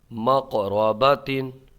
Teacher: قلقلہ ہوگا، مقرباتین آواز پلٹ کے آئے گی